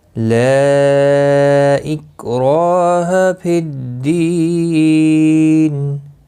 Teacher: لا مد منفصل ہے، حروف مدہ کے بعد جب حمزہ بشکل الف دوسرے کلمے میں آتا ہے تو مد منفصل لگتی ہے۔ 3 الف کے برابر کھینچ کر پڑھیں گے۔